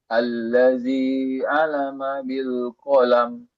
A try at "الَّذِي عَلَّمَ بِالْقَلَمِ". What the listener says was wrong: Alladzi 'allama bil qalam. Tekan lamnya. 'Allama bil qalam.